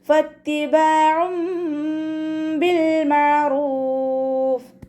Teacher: നൂനിൻ്റെ സൗണ്ടിനെ കേൾപ്പിക്കേയില്ല, മീമിൻ്റെ സൗണ്ടാക്കി മാറ്റിമറിക്കും ചെയ്യുക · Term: ഇഖ്ലാബിൻ്റെ